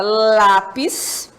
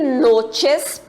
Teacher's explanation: a palavra lápis, penúltima sílaba lá, e noches, penúltima sílaba no, e é a sílaba tônica